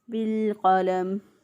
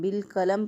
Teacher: क़ाफ को मोटा अदा करेंगे, तो बाज़ लोग इसको मोटा पढ़ने के बजाय बारीक पढ़ते हैं, बिलक़लम पढ़ देते हैं, क़लम के बजाय कलम पढ़ देते हैं तो गलत हो जाएगा।